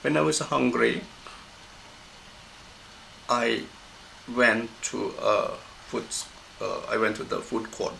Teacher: Then hungry is in a flat intonation.